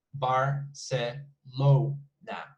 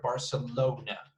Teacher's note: is uh the third pattern is barcelona bar se lo na so it's four syllables as you can see and the stress is in the o